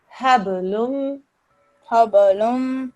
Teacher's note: Quite rightly, you recognize this as a qalqala letter. But when you do the qalqala, it should be just a little bounce. The ba should not sound as if it's carrying a fatha.